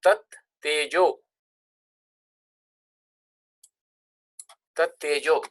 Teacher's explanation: So tad becomes tat because it is followed by a unvoiced consonant.